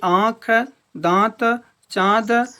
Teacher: इनका उच्चारण करते समय वायु का निकास मुख एवं नाक दोनों से होता है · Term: अनुनासिक